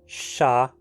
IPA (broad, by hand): ʃa